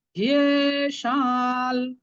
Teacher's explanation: লটা উচ্চারণ করার সময় নাকের সাহায্য নেব, এটা হচ্ছে সানুনাসিক ল